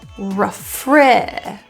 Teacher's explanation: The re turns to a schwa, so this will sound more like r.